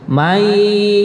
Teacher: nonnya diidghamkan kepada ya, kemudian ada gunnahnya. Jadi seakan-akan nonnya itu tidak ada, tapi adanya ya tapi ditambah gunnah gitu. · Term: idgham bi gunnah